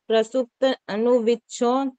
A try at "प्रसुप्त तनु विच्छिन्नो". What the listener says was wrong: प्रसुप्त अनु कहाँ से आया इसमें, इस तय को कौन कहाँ ले गए आप? प्रसुप्त तनु आएगा, विच्छिन्नो